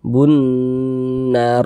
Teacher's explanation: itu disebut juga dengan Idgham Syamsiah jadi ini cara membacanya itu lamnya dia enggak dibaca langsung masuk langsung melebur ke huruf nun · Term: alif lam syamsiyah, idgham syamsiyah